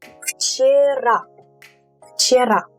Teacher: You will say it with an F at the beginning, kind of like this.